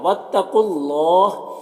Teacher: یہاں پر قاف حروف مستعلیہ میں سے پر پڑھیں گے